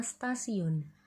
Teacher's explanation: Asimilasi progresif yakni bunyi yang diasimilasikan terletak sesudah bunyi yang mengasimilasikan. Misalnya perubahan bunyi T yang biasanya diucapkan apikodental diucapkan secara laminoalveolar · Terdapat pada kata tetapi dan kata stasiun. Perubahan letup apicodental T menjadi letup laminoalveolar karena pengaruh secara progresif dari bunyi geseran lamino alveolar S.